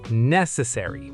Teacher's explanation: Stress on >> the very first syllable. [music] British and American English can differ slightly on the ending here, but that first syllable stress stays strong in both.